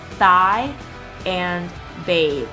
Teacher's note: The interdental fricatives are made by putting the tongue between the teeth and forcing air through the opening.